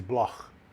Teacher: So it's a German name. In German, it's pronounced Bloch. Douglas Bloch. You know, that guttural sound. But in America, they just pretend the CH is a K.